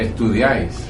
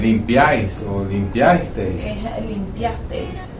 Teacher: hay 3 vocales que están unidas en una misma sílaba. En una misma sílaba, no se separan. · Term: triptongo